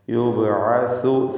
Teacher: സ നാവിൻ്റെ അറ്റത്തിൻ്റെ മുകൾ ഭാഗവും മേലെ മുൻപല്ലിൻ്റെ അറ്റവും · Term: സഇൻ്റെ മഖ്റജ്